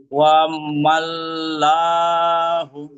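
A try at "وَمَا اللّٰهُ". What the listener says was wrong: মাল্লা ঠিক বলেছেন, কিন্তু এখানে লা হবে না, এখানে হবে, এখানে কি আছে, জবর আছে তো, জবরকে মোটা করে পড়েন, লামকে মোটা করে পড়েন, জবর থাকার কারণে আল্লাহর লামকে মোটা করে পড়েন।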